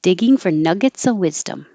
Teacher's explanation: You don't have to say nuggets of. You can drop the V.